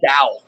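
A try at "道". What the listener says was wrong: Yeah, so it's spelled like Tao. But it's pronounced Dao. It's also DAO.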